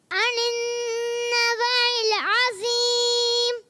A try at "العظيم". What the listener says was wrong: ذوق اور پر رکھنا ہے کیونکہ ایکسٹرا موٹے حروف میں سے. اور موٹا کریں، عظیم.